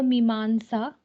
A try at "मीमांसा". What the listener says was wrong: Mimamsa. Me mamsa, me mamsa, all dirgha. Me mamsa.